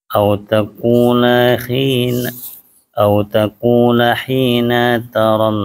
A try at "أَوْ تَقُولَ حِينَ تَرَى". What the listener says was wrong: Nanya pendek, hina ta langsung.